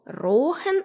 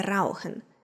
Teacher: замість дивтонгу ау берлінці вимовляють довге О